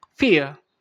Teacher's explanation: Kalau ini untuk yang British ya, karena tidak dibaca R-nya ya.